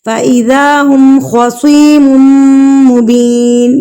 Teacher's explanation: میم مشدد, تو یہاں پر ہم غنہ کریں گے یعنی کہ ناک میں آواز کو لے کر جائیں گے